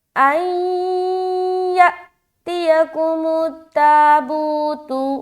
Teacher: نون ساکن کے بعد یا آ گیا، نون اسکیپ اور یا سے ملائیں گے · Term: ادغام ناقص کا غنہ